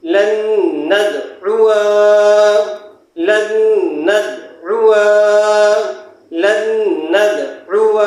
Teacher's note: اس نون سے تشدید والے نون سے ملا دیں گے. جزم والا نون نہیں پڑھا جائے گا، اس کو ادغام نون کہا جاتا ہے. گنہ کے ساتھ پڑھیں گے، لام نون زبر لن، نون دال زبر ند، لن ند، عین پیش عو، لن ندعو، واو زبر و، لن ندعو.